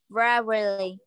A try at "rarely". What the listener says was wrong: No, not regularly. This is only two sounds, two syllables. Rarely.